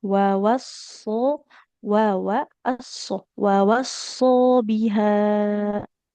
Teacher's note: hati-hati huruf shadnya tebal, wa-nya nggak boleh ikut tebal ya.